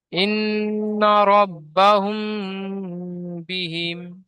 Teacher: মিম সাকিনের পরে বা এসেছে, তাই মিমকে এক আলিফ পরিমাণ গুণনা করে পড়তে হবে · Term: ইকফায়ে সাফাবি